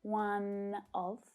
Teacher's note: we can link one and all together the consonant sound to the vowel one of and native speakers may not even pronounce that sound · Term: linking